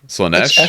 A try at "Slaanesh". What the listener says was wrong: No, isn't it double E at the end? No, it's Slaneesh. It's double E.